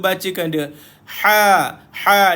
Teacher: jangan baca ha dengan tebal baca ha dengan nipis